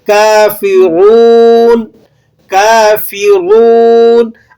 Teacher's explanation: اور رو کو آپ نے موٹا بھی پڑھنا ہے کیونکہ رو کے اوپر حرکت ہو تو رو موٹی پڑھی جاتی ہے۔ اسی طرح رو کے بعد واو بھی آ رہا ہے تو آپ نے 1 الف کے برابر اسے کھینچ کر بھی ادا کرنا ہے۔